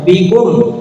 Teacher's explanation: Izhar syafawi itu mimnya jelas. Jadi tidak ditahan seperti lakum ming itu ditahan. Tapi kalau yang bikum tidak boleh ditahan.